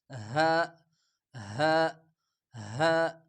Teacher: آسانی کے ساتھ سمپل سا بس منہ سے ہوا نکالتے ہوئے، زیادہ زور نہیں لگانا، ہا ہا ہا، بس منہ سے ہوا نکالتے ہوئے ہا ادا ہو جاتے ہیں۔ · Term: چشمے والے ہا